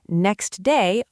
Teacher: Next day often loses its T sound. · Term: elision